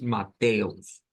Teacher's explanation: poniendo como la sílaba tónica donde hay fuerza de voz o donde está el acento en la TE propiamente